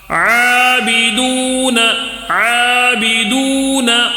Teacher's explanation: عابدون میں آ کو کھینچنا ہے، کھڑا زبر ہے نا عین کے اوپر، اس کے لیے 1 الف کھینچنا ہے